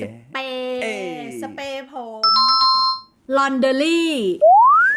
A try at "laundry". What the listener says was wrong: Laundry. Laundry. It's just 2, not 3. Laundry.